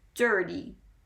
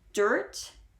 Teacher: because there are more letters following it it doesn't sound as strong and you don't hold it quite as long as in the one syllable version